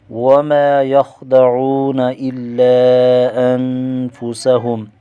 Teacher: وما پر الف مدہ ہے، ایک الف کھینچ کر پڑھیں گے، خا موٹا پڑھا جائے گا، واو ساکن کا واو مدہ ہے، ایک الف کھینچیں گے، الا انفسهم، لام پر مد منفصل ہے، اور 2 سے لے کر 4 الف تک کھینچ کر پڑھیں گے۔